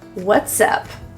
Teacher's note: we will slide the S to the U so that we can link it together